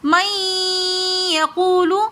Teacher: مَن یقول یہاں پر ادغام مع الغنہ کا قاعدہ ہو رہا ہے کیونکہ نون ساکن کے بعد یہ نون کے حرفوں میں سے یا آ رہی ہے تو اس لیے ہم نے یہاں پر غنہ کیا. یقول واو مدہ آ رہی ہے تو اس لیے ہم نے اس کو تھوڑا سا کھینچ کر پڑھا.